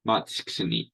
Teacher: the T must be removed because it's the less important sound